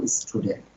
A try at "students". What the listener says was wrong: শেষে এসটা উচ্চারণ করতে হবে। স্টুডেন্টস এসটা উচ্চারণ করেন নাই, কিন্তু করতে হবে, এটা মাঝে মধ্যে মিসিং হয়, আমি দেখেছি।